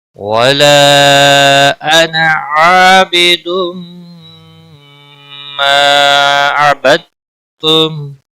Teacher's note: مد منفصل ہے، 3 الف یا 3 سیکنڈ کھینچ کر پڑھیں گے